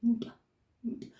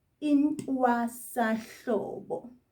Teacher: That NT sound, you make it by lifting almost all your tongue up to the roof of your mouth, so the top of your mouth, and just place it there, but sort of firm, and say nt, nt.